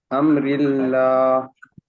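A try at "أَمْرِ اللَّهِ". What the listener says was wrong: হি আছে লাস্টে, হাজের হি। হ্যাঁ, আমরিল্লাহি, আল্লাহ শব্দের লামে খাড়া জবর আছে।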